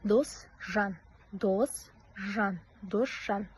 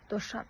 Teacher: Алдыңғы сөз с дыбысына бітіп, кейінгі сөз ж дыбысынан басталса, онда бұлардың екеуі де ш дыбысымен алмасады.